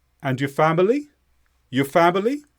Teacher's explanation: of how's your family we say and your family your family by going up with our voice at the end that's how we show it's a question so we don't need how is we don't need the question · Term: intonation